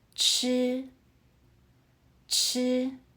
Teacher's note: 吃 uses the first tone. Keep your voice high and steady, like you're holding a note.